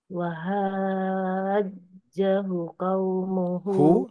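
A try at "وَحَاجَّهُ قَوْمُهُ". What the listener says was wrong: Hu-nya doma terbalik Bu. Hu, qaumuhu.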